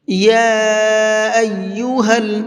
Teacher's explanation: یا کے اوپر چھوٹا مد ہے، تو اس چھوٹے مد کو 1 سے 3 الف کے برابر کھینچ کر کے پڑھیں گے